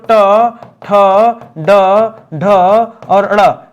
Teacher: मुर्धन्य वर्ण ठीक है क्योंकि इसमें जीभ उल्टी हो जाती है